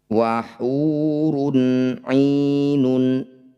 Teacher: Dhammah tanwin bertemu ain disebut bacaan izhar halki. Bunyi dhammah tanwinnya baca dengan jelas tanpa dengung.